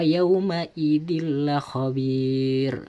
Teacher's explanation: Dan yang contoh kedua ini tanwin ketika bertemu dengan lam pada lafadz yauma idil la khabir, tidak boleh dibaca yauma idin la khabir, tidak boleh, harus dimasukkan suara tanwinnya seakan-akan lam tersebut bertasdid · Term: idgham bila gunnah